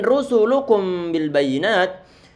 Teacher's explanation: Ini ro dia tebal, sin dia tipis, lamnya dia tipis, kafnya dia juga tipis.